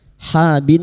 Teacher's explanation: nun yang bertasdid kita dengunkan selama 3 harokat